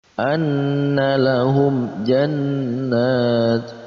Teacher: Maka dibaca jelas, antara mim mati dibaca jelas dan huruf setelahnya pun juga dibaca jelas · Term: izhar syafawi